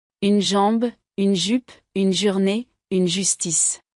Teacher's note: pour le son J on entend et on sent la vibration des cordes vocales